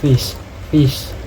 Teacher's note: Example of fricative consonant in English. First is labiodental fricative, voiceless, produced by placing the lower lip against the upper teeth